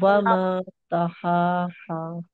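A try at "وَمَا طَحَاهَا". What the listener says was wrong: कहा अभी भी ता निकल रही है उसमें तो. लेकिन तोहा में भी देखिए, पहले तो के बाद बड़ी हा की तो अदायगी होगी.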